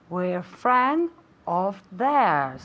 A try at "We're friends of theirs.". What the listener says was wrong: Okay, we're friends of theirs.